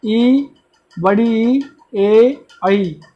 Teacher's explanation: इन वर्णों के उच्चारण के दौरान हमारे जीभ की अग्र हिस्सा, जो अगला हिस्सा है, उसका प्रयोग ज़्यादा हो रहा है, इसलिए अग्र स्वर कहलाते हैं ये।